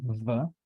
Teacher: we need the upper teeth and the lower lips to articulate the sound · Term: labiodental V